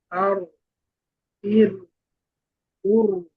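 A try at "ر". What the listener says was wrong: আচ্ছা, আপনার আরেকটা সমস্যা হচ্ছে যে ওই তাকরারের যে বিষয়টা, ওই তাকরারের সমস্যাটা হচ্ছে আর কি একটু। তো আর এভাবে যেন জিহ্বাটা জিহ্বার আগে কম্পন না থাকে। আর, ইর, জিহ্বার আগাটাকে একটু শক্তভাবে রাখতে হবে যাতে করে কাঁপার সুযোগ না পায়।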